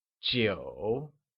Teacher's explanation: 9 translates to jiu and is pronounced with a falling, rising tone